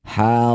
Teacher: Ro panjangkan 6 harokat, huruf terakhir mim yang masih hidup sukunkan. Harami, setelah berhenti haram. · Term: mad arid lisukun